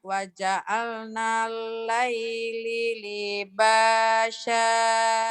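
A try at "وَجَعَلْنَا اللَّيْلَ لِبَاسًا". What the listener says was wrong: kenapa jadi Laili bu? Laila tuh bu Pandi Luhur. Laila ya bu.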